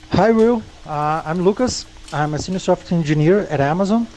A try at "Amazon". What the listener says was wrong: Zone, whereas I would do zon, Amazon. Amazon. I usually do am. So instead of am, I do am, which is what I'm calling band versus dress. Amazon.